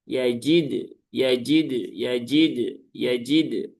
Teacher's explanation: Jadi cukup sentuhkan saja di tempat keluarnya huruf dal ya di gusi ya berarti. Kemudian setelah itu lepas ya.